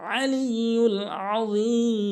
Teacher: অবশ্যই আইন এনে হলকের মাঝখান থেকে উচ্চারণ করতে হবে